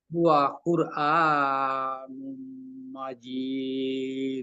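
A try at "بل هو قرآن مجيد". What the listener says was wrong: আবার এক আলিফ টান কিন্তু বেশি হয়ে যায়। বাল আমার দেখেন আমি পড়ি। আপনার জন্য উপযোগী এভাবে বাল হুয়া কুরআনুম মাজিদ শেষ।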